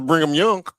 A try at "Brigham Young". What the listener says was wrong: Brigham. There's not no N in it. It's Brigham.